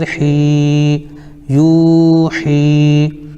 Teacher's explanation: یا ساکن سے پہلے حا کے نیچے زیر ہے اس لیے یا مدہ ہوگی، ان کو تھوڑا کھینچ کر پڑھیں